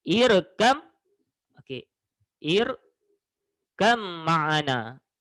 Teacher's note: Tetapi apabila bertemu ba dengan mim, okey, yang hampir sama makhraj, yang pertama berbaris mati dan yang kedua berbaris hidup. Jadi awak kena masukkan huruf ba ke dalam huruf mim. Masukkan. Okey, jadi awak sebut ba ni awak seolah-olah awak tak sebut. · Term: idgham